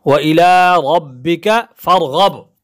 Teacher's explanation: فا کے بعد جو را ہے اس کو بھی ہم موٹا پڑھیں گے، غین کو بھی موٹا پڑھیں گے، با پہ قلقلہ کریں گے